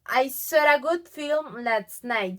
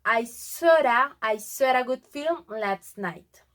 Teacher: You can tell the intrusive R between so and a.